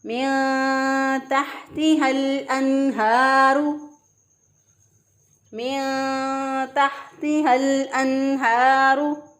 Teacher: हमने नून साकिन की आवाज़ को पोशीदा करते हुए अदा किया